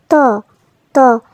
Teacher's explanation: জিহ্বার আগা সামনের উপরের দুই দাঁতের গোড়ার সাথে লাগিয়ে আমরা উচ্চারণ করব